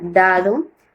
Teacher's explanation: Los dental, los órganos que intervienen en la producción del sonido son la lengua detrás de los dientes superiores